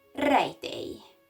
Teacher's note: The Hungarian R is very rhotic, and the letter J and LY are both the sound Y. And there is no difference between these two sounds.